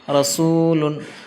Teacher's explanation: واو ساکن سے پہلے ضمہ یعنی پیش آیا ہے اس لیے واو مدہ ہوگا، واو مدہ کو ایک الف کے برابر لانگ کر کے پڑھنا ہے